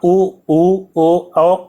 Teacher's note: तो यहाँ पे आप बोलते समय आप देखिए, बोल करके देखिए, तो आप ऊ ओ बोलेंगे तो आपका जो होंठ है वो कैसा बनता है, गोलाकार बन जाता है, वृत्त की तरह बनता है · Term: वृत्तमुखी